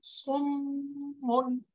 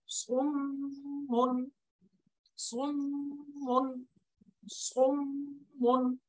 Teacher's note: মিমের উপরে তাসদিদ চলে আসছে, গুণনা করতে হবে , সুম্মুন, এই যে আওয়াজ ধরে রেখে পড়লাম, সুম্মুন সুম্মুন সুম্মুন।